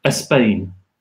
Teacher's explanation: So if you take a word like Spain, my students, because they're Spanish, will tend to add a little vowel and they will say Spain.